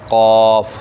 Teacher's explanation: زبان کی جڑ جب اس کوے کے ساتھ ٹکر کھا کے لگے گی تو وہاں سے ادا ہوگا قاف